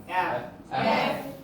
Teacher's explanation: এটা হচ্ছে উপরের দাঁত নিচে ঠোঁট লাগায় উচ্চারণ করতে হবে